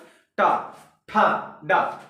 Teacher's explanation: लेकिन जो ये टा वर्ग है आप देखेंगे जो बिल्कुल मूर्धा से एकदम ऊपर से निकलता है, टा, ठा। जो आपकी जीवा है वो मुड़ी थोड़ी सी रहती है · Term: मूर्धन्य